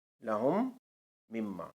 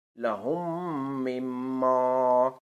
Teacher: میم ساکن کے بعد اگر میم متحرک ہو تو میم ساکن کو میم متحرک میں ادغام کر کے پڑھیں گے، جیسے لہم مما، لہم مما، میم ساکن کے بعد میم متحرک آئی ہے، اس پہ شد ہے، میم پر پہلی میم پہ جزم ہے، دوسری میم پہ شد ہے، تو اس میں ہم ادغام کر کے پڑھیں گے لہم مما۔